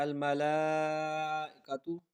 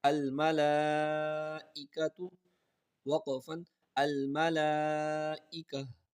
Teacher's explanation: اس میں حمزہ کی آواز کو تھوڑا سا جھٹکے کے ساتھ پڑھیں گے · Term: حمزہ کی جھٹکے